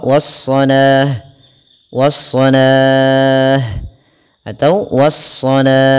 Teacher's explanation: kita boleh memanjangkan la-nya 2 harakat atau 4 harakat ataupun 6 harakat.